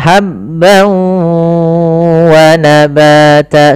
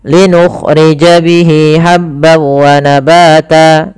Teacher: Langkah pertama masukkan tanwinnya ke waw, hilang suara nunnya menjadi suara waw, kemudian ditahan gunnahnya. Maka habban wa nabata sepanjang 2 harakat lebih sedikit. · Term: idgham bi gunnah